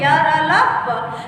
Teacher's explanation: यानी ये भी कहा जा सकता है हमारी जिह्वा झटके से नीचे गिरती है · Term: अंतःस्थ व्यंजन